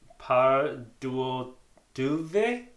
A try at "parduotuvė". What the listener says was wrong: You said tuve. You said too soft, but tuve. Parduotuvė. No. You say parduotuvė. Parduotuvė. As you see, with R, it's a little bit harder.